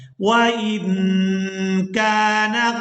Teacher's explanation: اب یہاں نون ساکن پر ہم نے کرنا ہے اخفا، کیونکہ نون ساکن ہے اور اس کے بعد والا جو حرف ہے یہ حروف اخفا میں سے ہے اور یہ ہے قاف. تو یہاں نون ساکن کی آواز کو ناک میں چھپا کر ادا کریں گے اور اسی کو اخفا کہا جاتا ہے.